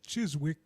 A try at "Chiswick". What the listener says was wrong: We don't pronounce the W.